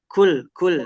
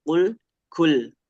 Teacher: kalau yang kaf itu kul, dia ada angin-angin keluar tuh